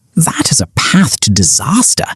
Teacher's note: dropping his jaw for a broad British A